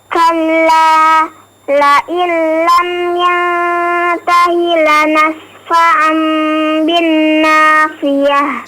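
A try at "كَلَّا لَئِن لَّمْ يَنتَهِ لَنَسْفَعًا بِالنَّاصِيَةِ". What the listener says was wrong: Sama ya, lanas fa'am bin. Di binnya juga panjang ya, dipanjangkan gunnahnya.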